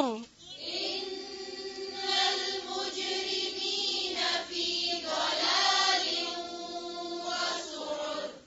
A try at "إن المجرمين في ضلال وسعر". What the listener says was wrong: ضلا لام کو نہیں موٹا کریں پھر سے پڑھیں